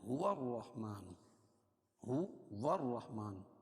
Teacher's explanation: واو کو را میں ملائیں گے اور را پر تشدید والا حرف 2 مرتبہ پڑھا جاتا ہے